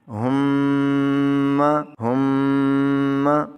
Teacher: جب آپ ہا کو میم سے ملائیں گے تو یہاں پر آواز کو لمبا کریں گے، گنگنائیں گے، آواز کو غنہ کریں گے